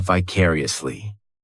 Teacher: And the 4th syllable has the schwa